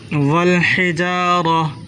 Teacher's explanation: حا کو حلق سے نکالیں، را کو پور کر کے پڑھیں